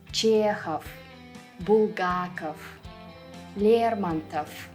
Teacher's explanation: All the Russian male surnames that end with ov will also be pronounced with f at the end